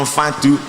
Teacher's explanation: ketika ada nun bertemu fa berarti makhrajnya pada fa